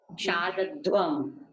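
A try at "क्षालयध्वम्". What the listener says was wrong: Shalayadvam. Aya Vikarana you have to remember.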